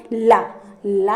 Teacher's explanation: क्या हो आगे का भाग जो है मसूड़ों को छूता हो मसूड़ों को छूकर बोला जाता है और वायु जिहा के पार्श्व में से निकलती है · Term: पार्श्व व्यंजन